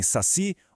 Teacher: Em saci, o si é que carrega o acento tônico.